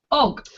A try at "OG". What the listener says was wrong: Almost. Not with as much pressure on the G. So O.